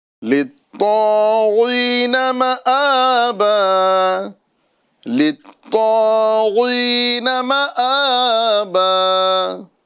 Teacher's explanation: غین حالانکہ اس کے نیچے زیر ہے، حالت کسرہ میں ہے، لیکن پھر بھی ہمیں غین کو پر کر کے پڑھنا ہے